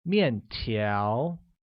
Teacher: which uses a falling tone on the first A and a mid-rising tone on the second